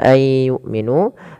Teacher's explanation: suara nunnya kita masukkan kepada huruf ya Dan kita tahan suara huruf y-nya Ai pertamanya begitu kemudian Langkah kedua ditahan aiu sambil dimasukkan ke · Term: Idgham